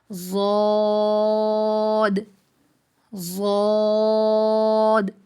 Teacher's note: زبان کی کروٹ اور اوپر کی 5 داڑیں، یہاں سے ضاد ادا ہوتا ہے۔